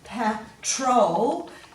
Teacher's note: you can hear the second part of the word is emphasized